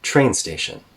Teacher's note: we still have a higher tone on train compared to station but it's a falling tone here